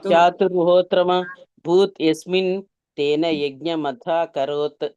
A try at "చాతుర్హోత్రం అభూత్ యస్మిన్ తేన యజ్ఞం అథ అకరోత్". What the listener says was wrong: ఇక్కడ చాతుర్హోత్ర భూత్ అనకూడదండి, చాతుర్హోత్రం అభూత్. చాతుర్హోత్రం అభూత్ అంటే ఏర్పడింది అని అర్థం. అభూత్ అంటే చాతుర్హోత్రం అభూత్ యస్మిన్ తేన యజ్ఞం అథ అకరోత్. అకరోత్ అంటే చేశాడు, ఏర్పడింది, చేశాడు అని అర్థం అకరోత్ అంటే. కాబట్టి యజ్ఞం అథ అకరోత్ అలా చదవాలి.